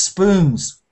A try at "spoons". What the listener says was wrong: It's a little bit it's a bit off the oo sound. You want to be oo, like boot.